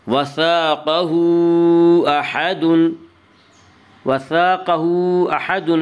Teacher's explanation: وثاقہ احد میں مد منفصل ہوگا۔ مد منفصل وہ مد ہے جس میں حرف مد کے بعد حمزہ دوسرے لفظ میں ہو۔ مد منفصل میں حفص کی روایت میں بطریق شاطبی یا صرف توسط ہے، توسط کی مقدار 2 الف، 2.5 الف اور 4 الف ہے، اور بطریق جزری قصر و توسط دونوں جائز ہیں، لیکن اکثر دنیا میں شاطبیہ کا طریقہ رائج ہے۔